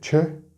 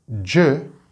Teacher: There's no vibration with the ch sound. Make a ch, no vibration.